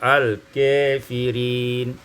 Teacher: Pada ayat 74 al-kafirin imalatu fathul kaf wal alif, dibaca imalah fathah kaf dan alif sehingga kita baca al-kafirin.